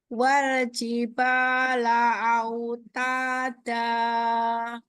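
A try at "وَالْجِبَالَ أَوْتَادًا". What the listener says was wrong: Lebih cepat lagi. Wal, wa, wa. Jadi dasarnya huruf waw dari bibir dimonyongkan dulu. Jadi bukan wal, wal. Ini nggak dimonyongkan.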